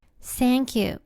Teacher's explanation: 最初のTHAの部分がさと発音されています。